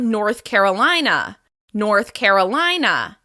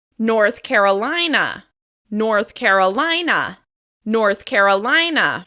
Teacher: This state is stressed on the third syllable of the second word.